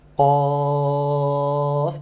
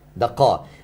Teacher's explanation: When you start again, the letter حروف المقطعة, this letter, you need to stretch it 6 حركة, yes? قاف, and it's full mouth as well